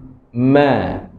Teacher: secara teknikalnya bibir atas dan bibir bawah melekat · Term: huruf mim